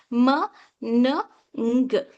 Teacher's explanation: Air flows through the nose instead of mouth.